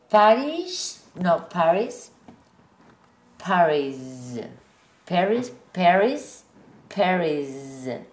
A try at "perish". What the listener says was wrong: It's not a Z. It's forward, forward no. That's it. Perish. Forward no vibration.